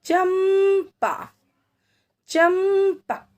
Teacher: जो अनुस्वार की मात्रा है लगी हुई है इनमें, अब उसके उच्चारण में आधे म की आवाज आ रही है